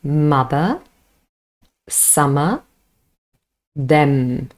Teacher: both lips are closed, the air escapes through the nose, and, important, vocal cords vibrate because is a voiced sound.